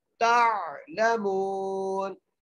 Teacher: तालमून, ता को आइन से मिलाना है, यहाँ पर बड़ी एहतियात करनी है, यहाँ पर आइन पढ़ना है, हमजा नहीं पढ़ना